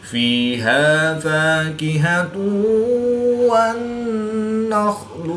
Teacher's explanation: دو پیش کی تنوین کے بعد واو حروف المعلوم میں سے ہے تو یہاں پر ادغام مع الغنہ ہوگا، یعنی غنہ کر کے پڑھیں گے